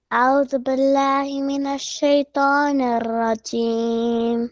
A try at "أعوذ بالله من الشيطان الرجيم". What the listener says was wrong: Okay, raw should not be rubbed too much. Raw should be more softer. It should not vibrate like not like that. It should be more softer. أعوذ بالله من الشيطان الرجيم.